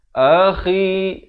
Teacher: kha di hujung kerongkong ini